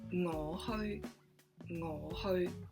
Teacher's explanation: And how do you say go? It's ho, ho in the mid-tone. So it's hanging in the air again, a mid-tone.